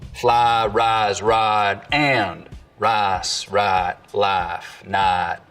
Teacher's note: there's always been what we can describe as full price smoothing